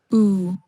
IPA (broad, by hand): u: